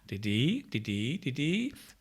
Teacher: There is a little bit of repetition of the rising intonation pattern